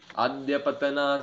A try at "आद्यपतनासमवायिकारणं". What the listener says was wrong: अद्य नहीं, आद्य।